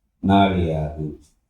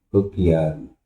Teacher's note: குற்றிய லிகரத்தில் உள்ள இகரமும் ஒரு மாத்திரையிலிருந்து குறைந்து ஒலிக்கும். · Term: குற்றியல் இகரம்